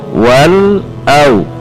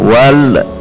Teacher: Ketika membaca wal, ujung lidah kita menekan titik lam dan itu tidak usah dilepas, langsung membaca yang ada di depannya